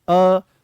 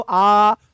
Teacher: यह अर्ध विवृत्त हैं। अर्ध विवृत्त का मतलब यह है कि मुख यहां पर आधा खुलेगा।